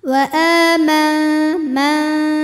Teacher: Cara membaca nun sukunnya adalah disamarkan, siap-siap menuju makhraj huruf ta disertai dengungan. Dengungnya sedikit, suara yang masuk hidung sedikit, aliran suara dari mulut masih banyak. · ujung lidah kita sudah mau menyentuh makhraj huruf ta yaitu pangkal gigi seri atas ya. Tapi baru mau saja, belum menyentuh ya. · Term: ikhfa aqrab